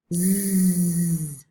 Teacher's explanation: when you say z, you can see the vibration, you can feel the vibration because your vocal folds are producing voice · Z is basically the same as s, but made with voice. So s is voiceless and z is voiced. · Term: voiced consonant